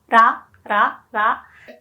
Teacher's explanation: So this R sound is actually closer to D sound. So maybe you want to pronounce it more like ra, but it's closer to da.